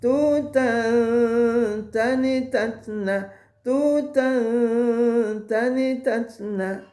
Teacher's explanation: Tutan. Jadi menyamarkan bunyi tanwin kepada huruf ta, seolah posisi huruf lisan kita ketika itu mau mengucapkan huruf ta, tapi digantung.